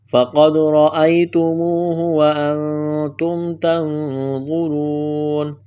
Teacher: فَقَدْ قلقلہ کریں گے، دال پر، را کو موٹا کرنا ہے، یا لین ہے، اس کو کھینچنا نہیں ہے، واو مدہ ہے، اس کو ایک الف کے برابر کھینچنا ہے